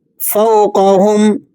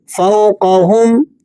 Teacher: واو ساکنہ ہو، ما قبل مفتوح ہو تو ایسی واو کو واو لین کہا جاتا ہے، اسے نرمی سے پڑھتے ہیں۔